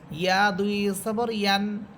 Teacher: হামজা দুই জবর আন এবং ইয়া ইয়া দুই জবর ইয়ান, জিহ্বার মধ্যখান উপরে তারও সাথে লাগবে।